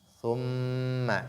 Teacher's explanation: Thumma, ici, nun mushaddada, on l'a prise, il faut faire apparaître la ghunna. Thumma, il faut donc la nasalisation.